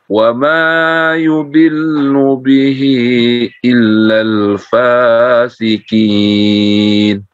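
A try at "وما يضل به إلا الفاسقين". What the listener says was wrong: Baik, mad jaiznya dipanjangkan lagi sedikit, Pak. Bihi illal fasiqin.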